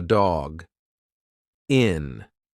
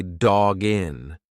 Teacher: So it's like the second part of that sound is jin. You've put the g in front of the next word. It's one sound.